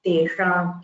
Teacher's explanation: it should be from the murdha that is from the hard palate top of the roof of the mouth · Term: this sha